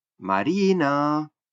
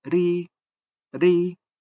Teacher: La sílaba ri de Marina se realiza en un tono bajo, ri, ri, mientras que si llamamos Marina, Marina, la misma sílaba se realiza con un tono alto